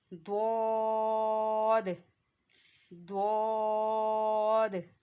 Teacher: ज़बान की करवट और ऊपर की दाढ़ों की जड़ से अदा होता है।